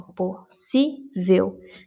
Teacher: na palavra possível, a palavra mais forte, a sílaba mais forte, é si. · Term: sílaba tônica